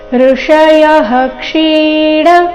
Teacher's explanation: ನಂತರ ಇರೋ ವಿಸರ್ಗದ ಉಚ್ಚಾರಣೆ ಹ ಎಂದು ಬರಬೇಕು ಇದು ವಿಸರ್ಗದ ಅಪವಾದ ನಿಯಮವಾಗಿದೆ ವಿಸರ್ಗದ ನಂತರ ಕ್ಷ ಬಂದರೆ ವಿಸರ್ಗದ ಉಚ್ಚಾರಣೆ ಹ ಎಂದು ಬರಬೇಕು